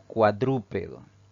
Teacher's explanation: Si dividimos en sílabas, esta palabra tiene 4 sílabas. Al pronunciarla, la mayor fuerza de voz va a caer en la antepenúltima sílaba contando de derecha a izquierda. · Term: palabra esdrújula